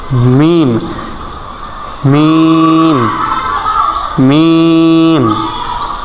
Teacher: মিম দুই ঠোঁটের শুকনা জায়গা হইতে মিম দুই ঠোঁটের ভিজা জায়গা না মিম না মিম মিম মিম